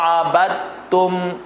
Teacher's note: عبدتم پڑھیں گے، دال نہیں پڑھیں گے